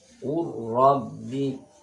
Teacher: Contoh yang lam sukun bertemu dengan ra, Rabbi. Jadi langsung bunyinya ke ra